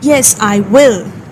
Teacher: In this case, you don't use the contraction, okay, because you are stressing on the word will, which is another way of saying yes